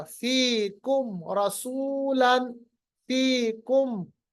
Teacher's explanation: बस मीम को जाहिर करके आगे बढ़ गए, क्योंकि मीम साकिन के बाद रॉ आ रहा। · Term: इजहार